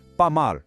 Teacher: na palavra pas, o S no final é mudo